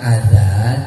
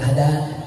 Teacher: Orang Sunda nggak bisa bilang zal, dia jadi dal.